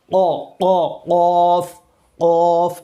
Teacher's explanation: اقصائے لسان یعنی زبان کا نچلا حصہ، جڑوں والا حصہ جہاں سے قوف ادا ہوتا ہے